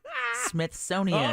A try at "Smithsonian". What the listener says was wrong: You're saying Smithsonian as if it's Jimmy Smith owns it.